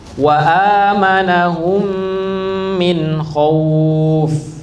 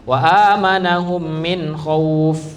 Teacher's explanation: Mim mati lebur ke mim berikutnya hampir mirip dengan idgham bighunah. Dan dengungnya pun sama satu alif atau kalau biasanya pakai harakat dua harakat. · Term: idgham mimi